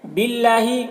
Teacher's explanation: نو میں بھی واو مدہ ہے، اسے بھی ایک الف کے برابر کھینچیں گے۔ باللہ، اللہ کے لام سے پہلے زیر ہے، اللہ کے لام کو باریک پڑھیں گے